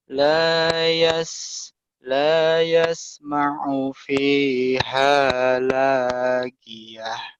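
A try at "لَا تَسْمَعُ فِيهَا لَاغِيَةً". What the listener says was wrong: La yas la tasma'u bukan yasma'u ya. La tasma'u.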